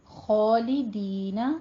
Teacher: خوا کو پر پڑھیں گے اور اس کے اوپر فتحہ قائمہ ہے، 2 کاؤنٹ کرتے ہوئے منہ کو کھول کے ادا کرنا ہے.